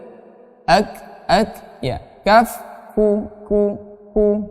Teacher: makhrajul huruf kaf ada sedikit angin, ya, tetapi tidak berlebih.